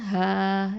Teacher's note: லாம் ஃபத்ஹால, ஹ ஃபத்ஹா அலிஃப் மத்து ஹ, 2 ஹரக்கத்தை நீட்டணும். இந்த ஹ வந்து இதுவும் என்ன எழுத்து, அக்கசல் ஹல்கு லெட்டர், அடித்தொண்டை எழுத்து